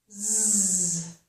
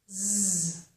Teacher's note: Sounds very similar to the voiceless sound, of course, which is s. However, because this sound is voiced, we hear and feel vibration · With this sound, I have the tongue inside my mouth. It is not between my teeth